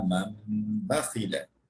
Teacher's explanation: So Noon Sakin becomes Mim Sakin. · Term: Iqlab